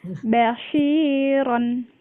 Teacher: Nah, yang panjang itu shinnya ya Bu ya, karena di depannya ada ya sukun.